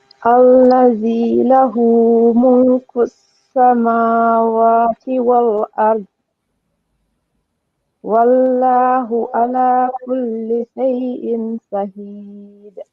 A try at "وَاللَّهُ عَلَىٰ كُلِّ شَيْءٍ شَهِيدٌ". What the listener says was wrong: Yep, good job. Just make sure you make the name of Allah heavy.